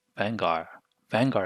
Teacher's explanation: when we say vanguard drop the d off so here a lesion also happens so we end up saying